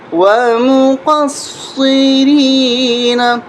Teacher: را یا زیر ری، ومقصرین، نون زبر نا، ومقصرین، ومقصرین. قاف کو موٹا کریں گے اور صاد کے اوپر تشدید ہے، یہاں پر سختی کے ساتھ پڑھیں گے. ومقصرین.